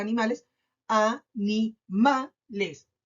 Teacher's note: A, ni y les son sílabas átonas